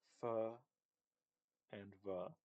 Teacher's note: Fa and va are both labial dental